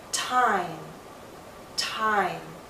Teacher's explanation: M is a voiced consonant, so the same sound now becomes longer. Because it's longer in the word time, you're going to see more movement in my mouth.